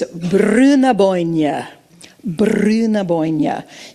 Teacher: Get that good rolled R in there for Brunaboyne.